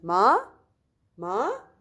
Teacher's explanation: the second tone like you're asking question